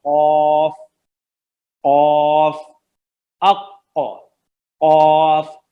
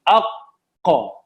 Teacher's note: सही है जी, जो जबान का डीपेस्ट पार्ट है ना, अक्सर लिसान, वो होगा जब वो गीले और सॉफ्ट तालू से, जो अंदर हलक की तरफ है, सही है जी, गीला और सॉफ्ट तालू अंदर हलक की तरफ है ना, जब आपकी जबान की जड़ उससे मिलेगी, गीले और सॉफ्ट जो तालू है उससे, तो कौफ आएगा।